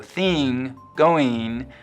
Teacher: Before NG, it's likely to sound like E, so thing, going, just like the rest of the West, but otherwise it's lowered like dress and trap. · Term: kit vowel